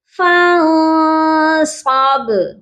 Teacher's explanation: با حروف قلقلہ ہے، یہاں ساکن بھی ہو رہا ہے، اس لیے ہم یہاں پر با پر قلقلہ کریں گے